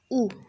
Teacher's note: Okay, पश्च संवृत है उ।